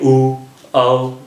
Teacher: आपका इसमें जो ओठ हैं वो वृत्ताकार हो जाते हैं, यानी कि गोलाई में हो जाते हैं। जैसे ऊ औ, अगर हम लोग बोलें भी फिर भी हमारा जो मुख है वो कैसा हो जाता है, या ओठ है, स्पेशली ओठ है, वो किस शेप में आ जाते हैं, सर्कल शेप में आ जाते हैं। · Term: वृत्ताकार स्वर